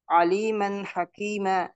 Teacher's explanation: huruf izhar dari tempat keluarnya tanpa disertai dengan dengung. Ya, tanpa disertai dengan dengung. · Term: izhar halqi